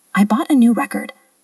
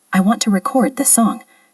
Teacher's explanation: As a noun, meaning a CD or an achievement, we stress the first syllable, record. But as a verb, meaning to capture sound or video, we stress the second syllable, record.